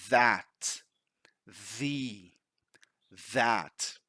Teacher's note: So the voiced TH, you can feel a vibration at the back of your throat.